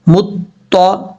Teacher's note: طا کا مخرج ہے زبان کی نوک اوپر والے دانتوں کی جڑوں سے لگے اور زبان جو ہے وہ اوپر کی طرف اٹھے گی تو طا پڑھا جائے گا.